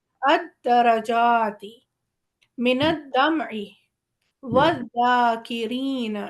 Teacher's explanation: ایک لام ہے جسے ہم نے بیچ میں سے غائب کر دیا، پڑھا نہیں ہے اور ہم سیدھا الف کو دال سے ملا رہے ہیں کیونکہ دال پہ تشدید ہے، الف کے اوپر حرکت ہے، دال